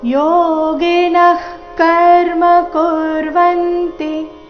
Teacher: ಆದ ನಂತರ ವಿಸರ್ಗ ಇದೆ ವಿಸರ್ಗದ ನಂತರದ ಶಬ್ದ ಕ ದಿಂದ ಶುರುವಾದ ಕಾರಣ ವಿಸರ್ಗದ ಉಚ್ಚಾರಣೆ ಅರ್ಧ ಖರೀತಿ ಬಂದಿದೆ ಅಲ್ಲಿ ಶ್ವಾಸ ಬಿಟ್ಟು ಮುಂದಿನ ಶಬ್ದ ಕರ್ಮ ಅದನ್ನ ಉಚ್ಚಾರಣೆ ಮಾಡಬೇಕು